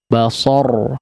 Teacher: di akhir ayatnya huruf ra dibaca tebal